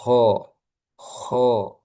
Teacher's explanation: Sekarang huruf K dia tebal karena termasuk huruf yang mempunyai sifat istilla'la terangkat pangkal lidahnya.